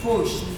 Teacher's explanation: Sh. Therefore, if I add ed to make it past tense, which is regular, the ed sound is going to give me t, such that by transcription I have pushed.